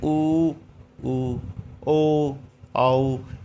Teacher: इनका उच्चारण करते समय हमारा जीभ का पीछे वाला हिस्सा सक्रिय रहता है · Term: पश्य स्वर